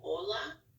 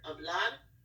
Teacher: So for example, hola, you don't pronounce the H, or hablar, there's an H in the front, but you just wouldn't say it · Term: H is silent